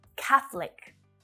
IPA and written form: 'kæ θ (ə) lik (Catholic)